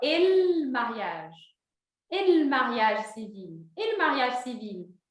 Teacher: o L junta com o E, fica ele mariage.